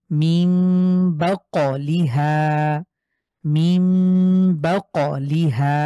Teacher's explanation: তাহলে এখানে নুন সাকিনের পরে বা থাকার কারণে আমরা নুন সাকিন অথবা তানভিনটাকে মিম দ্বারা পরিবর্তন করে পড়বো। যেমন মিম, এখানে নুন সাকিনের পরে বা আছে, সুতরাং নুন সাকিনকে মিম দ্বারা চেঞ্জ করে পড়বো,